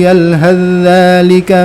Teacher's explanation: fa-nya masuk secara sempurna ke dzal, jadi udah enggak kedengaran fa-nya lagi